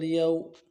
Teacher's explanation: واو لین ہے، واو لین کو نہیں کھینچیں گے، واو مدہ کو کھینچ جاتا ہے۔